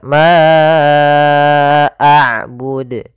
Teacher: Mad jaiz munfasil terjadi sebagaimana tadi la yaitu adanya hamzah yang datang setelah huruf mad. Kita panjangkan untuk huruf ma panjangnya empat harakat. Ma a'bud. Kemudian pada lafal qalqalah di huruf dal ini termasuk ada bacaan qalqalah.